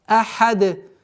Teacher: После долготы обращайте внимание на полноценное произношение звука хамза с огласовкой фатха ахад. И при остановке у нас танвин аннулируется, переходит в сукун.